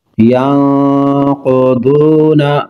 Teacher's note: نون ساکن کے بعد قاف حروف اخفاء غنہ کر کے پڑھیں گے۔